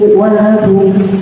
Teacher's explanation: Disebut bacaan Idgham Biguna yang artinya masuk dengan dengung. Jadi domah tanwin dibaca dengung, ditahan 3-4 harokat atau ketukan.